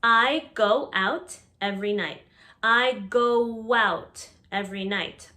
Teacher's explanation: notice the w sound added here